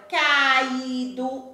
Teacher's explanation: o A fica separado do I, por isso esse encontro é chamado de hiato